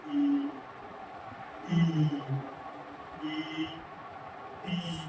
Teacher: ये हमारा मुख का जो तालु है वो तालु से इसका उच्चारण होता है। तालु तालु से उच्चारण होता है। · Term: तालव्य